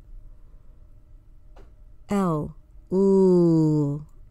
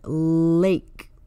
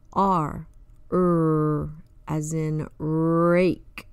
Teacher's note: These are called liquid consonants because they make a continuous sound like a vowel.